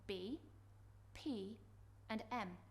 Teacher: the bilabial sounds these are produced with two lips